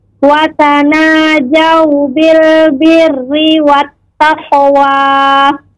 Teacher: Birri dibaca dengan tipis, tidak birri tapi birri karena ra berharakat kasrah